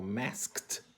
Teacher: Então, um som como masked, ele vai ficar parecido com a palavra basket, que é, né, cesta em inglês, porque você tem um som de K que é sem vibração, ele vai atrair outro sem vibração, que é o T